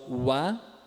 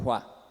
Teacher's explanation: O sonoro wa e o surdo hua.